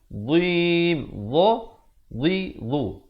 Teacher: Makhrajnya itu hujung lidah itu mesti keluar macam huruf zal, cuma bunyinya tebal.